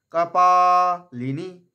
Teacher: লিটা হর্ষ রাখছি, নিটা দীর্ঘ রাখছি।